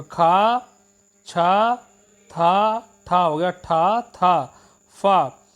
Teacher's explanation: ये सारे अघोष महाप्राण व्यंजन है